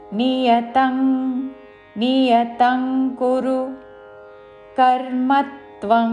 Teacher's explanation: అనుస్వారములు తర్వాత కాతో పదములు మొదలైనవి కాబట్టి కావర్గంలోని అనునాసిక అంగ్ ఉచ్చారణతో